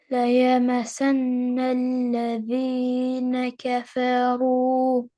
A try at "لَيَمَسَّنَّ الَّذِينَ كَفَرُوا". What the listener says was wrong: Scene was not pressed properly.